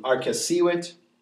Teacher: Here's another one, arcessīvit. Second to last syllable, it's a long I, so it would take the accent.